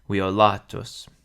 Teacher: violatus has a long penult, so that's where the accent falls.